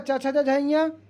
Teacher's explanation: चा वर्ग तालू से बोला जाता है